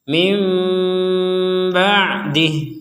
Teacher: Nah, berbeda lagi ketika orang tersebut membacanya dengan menggabungkan nun kepada ba sehingga menjadi mim ba'dih, bukan min lagi tapi mim. Nah, huruf terakhirnya adalah mim.